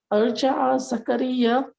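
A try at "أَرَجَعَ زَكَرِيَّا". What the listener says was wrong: Araja, no, araja'a. No, araja'a. No, araja'a. A is by itself.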